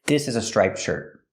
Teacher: you don't really hear the T it's a stop